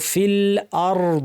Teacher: হামজাটা শক্ত হবে দুই নম্বর হচ্ছে এর আওয়াজটা কিছুক্ষণ থাকবে এবং সর্বশেষে যেন কলকালা অথবা বাতাস বের না হয় খেয়াল করতে হবে অনেকে ভুলে বলেন ফিল আর এটা হচ্ছে কলকালা